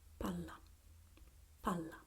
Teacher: when we have the double consonant, the vowel that precedes the special combination is shorter, is sharper.